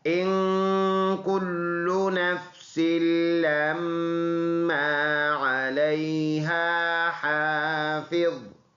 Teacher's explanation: نون میں غنہ ہوگا، اخفا جس کو ہم کہتے ہیں، ایک الف کے اندازے سے ناک میں آواز لے کے جائیں گے. لام مشدد ہے، جماؤ کے ساتھ پڑھیں گے.